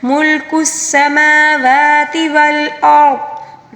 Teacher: را کو بھی پر پڑھیں گے کیونکہ را ساکن سے پہلے والے حرف کے اوپر زبر ہے، ٹھیک ہے، اور وقف کے دوران ضاد کے نیچے جو زیر ہے اس کو ہم نے ساکن کے ساتھ پڑھنا ہوگا، ٹھیک ہے۔